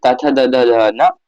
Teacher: दंत, दांत और जीभ के स्पर्श से बोले जाने वर्ण